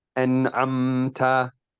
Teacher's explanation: The most prominent mistakes which occur when pronouncing the mim sakina. One is prolonging the duration of the gunna more than needed when making idhar